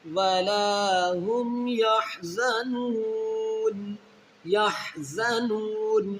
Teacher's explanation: واو مدہ کو جب اس کے بعد والا حرف یعنی وقف کی وجہ سے ساکن ہے تو اس واو مدہ کو ہم نے 3 الف کی مقدار کھینچ کر نون ساکن کرنا ہے